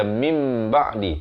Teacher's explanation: Ditukarkan bunyi nun kepada bunyi mim. Daripada min ba'di kena baca mim ba'di. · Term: hukum iqlab